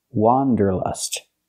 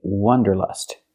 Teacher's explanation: for the first syllable use the open a sound like hot and stop